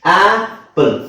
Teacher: ಶಬ್ದ ಎ ಅಂತ ಇಲ್ಲ ಆ ಅಂತಿದೆ